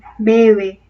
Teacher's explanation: El modo de articulación, no, porque en ambos casos se trata de sonidos aproximantes, es decir, llegan a aproximarse, se juntan, no hay fricción y no hay tampoco oclusión